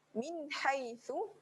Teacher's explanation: pada kalimah haitsu ada satu huruf ha berada di tengah kerongkong.